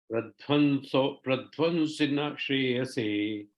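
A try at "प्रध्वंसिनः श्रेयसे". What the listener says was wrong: Pradhan, the na sound should not come. Pradhvam sound should come. Pradhamsi nash.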